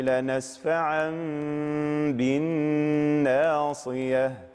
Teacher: لنسفعا ب هنا حكم القلب، تقلب نون تنوين ميما